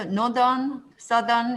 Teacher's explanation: north 할 때는 voiceless지만 northern, southern 할 때는 voiced가 됩니다. 역시 이것도 모음과 모음 사이에 th가 껴있기 때문에 유성음이 된 그런 현상이고요.